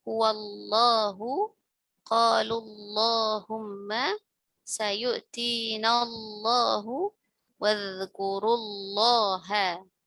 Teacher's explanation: Nah, ini contoh ini contoh lam yang huruf lam ditafkhimkan pada semua lafzul jalalah yang didahului oleh fathah atau dhammah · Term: lam mufakhamah